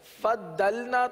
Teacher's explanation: ضاد کے اندر جماؤ کریں گے، صفت استطالت کی وجہ سے یہ اس طریقے سے ادا ہوتا ہے ، فضلنا تو دال بن گیا، اس طرح فد، یہ بھی